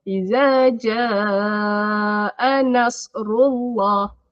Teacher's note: Ja tu kena panjang sebab dia mat jaiz